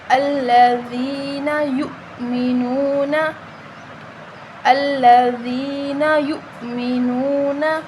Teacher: دال کو نرم پڑھیں گے، دال کے آگے یا مدہ ہے، اس کو 1 الف کے برابر لمبا کریں گے